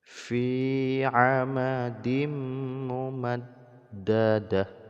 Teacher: Jadi dimasukkan bunyi tanwin ke dalam mim ya. Kemudian didengungkan 2 harokat. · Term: idgham bi gunnah